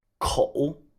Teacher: Note that I'm going down and then up.